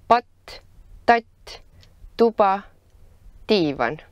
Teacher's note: T is a voiceless alveolar plosive that you pronounce by creating a pressurized closure between your tongue tip and the alveolar region of your mouth behind your teeth.